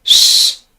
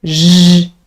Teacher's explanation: Sh, no vibration, but then zh, clear vibration.